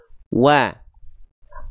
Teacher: waw yang pertama kita monyongkan dulu mulutnya, baru masuk ke vokal A.